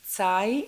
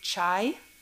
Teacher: we have the sound which is tsai in greek in cypriot we say chai